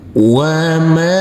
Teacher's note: huruf mim kita baca panjang dengan panjang 2 harokat. Karena huruf mim ini huruf mim yang berfathah A bertemu dengan huruf alif yang tidak berharokat.